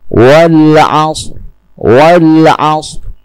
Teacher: Yang terlihat hanyalah getaran huruf ro tanpa suara ro yang keras. · bukan dengan mengeraskan bunyi ro. Hanya sedikit memperlihatkan getarannya. · Contohnya pada surah Al-'Ashr, wal 'ashr, wal 'ashr, yang terlihat hanya getarnya ra tanpa suara ra yang keras. Wal 'ashr, bukan wal 'ashr, 'ashr, bukan dengan mengeraskan suaranya ra, hanya sedikit menampakkan getar. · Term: ro sukun